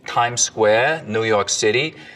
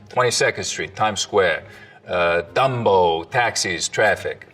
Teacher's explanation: The tongue tip hits the teeth, or close to them, on TD and N sounds instead of, a little further back. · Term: tongue tip on the teeth